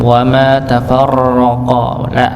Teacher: Ditebalkan pada huruf ra-nya dan tidak terlalu banyak kegetaran. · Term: ra-nya yang tebal